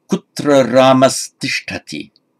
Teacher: the visarga before the dental t changes to an s